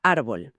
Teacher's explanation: Pero árbol es rebelde. Árbol quiere mantener la fuerza en la primera sílaba, rompiendo la tendencia natural que le dictaría su terminación en L. Así que el idioma, que es muy listo, coloca una tilde sobre la A de árbol para avisarnos de la excepción antes de que la pronunciemos.